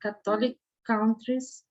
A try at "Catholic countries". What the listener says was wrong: And so actually Catholic, so remember in English, you want the emphasis up front. So you gave it a little bit of a Portuguese pronunciation. So Catholic countries.